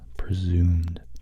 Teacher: You can have a short or long S, presumed. So it's less of a short S, more of a long, almost a Z sound to it